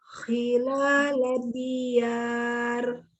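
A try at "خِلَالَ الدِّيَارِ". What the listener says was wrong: Dalnya bertasdid nggak? Kedengaran tasdidnya diulang?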